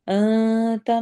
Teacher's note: انت میں نون کے آواز کو چھپا کے پڑھنا ہے